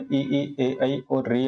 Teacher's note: जिन स्वरों के उच्चारण में जो है जिह्वा के आगे का भाग जो है सक्रिय में रहता है, उसे अग्र स्वर कहते हैं